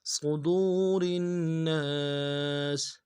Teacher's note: واو ساکن اس سے پہلے پیش ہے، واو مدہ ایک الف کی مقدار میں کھینچنا ہے ، اس کو بھی نہیں کھینچا جا رہا ہوتا، صدور الناس